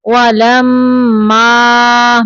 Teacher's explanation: میم مشدد پہ غنہ کریں گے۔ یہ دیکھیں یہاں پہ الف مدہ ہے، یعنی الف کے پیچھے زبر ہے تو یہ الف مدہ ہے، 2 سیکنڈ تک اس کی لمبائی ہے۔